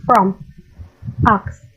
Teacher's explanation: The sound is A and O, because it is a considerable gap between tongue and roof of the mouth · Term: low